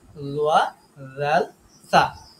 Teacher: জিহ্বার আগা সামনের উপরে ২ দাঁতের আগার সাথে লাগায় আমরা এই ৩ টা হরফ উচ্চারণ করব একটু নরম করে